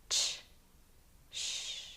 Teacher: both are voiceless or unvoiced meaning that your throat will not vibrate when you say them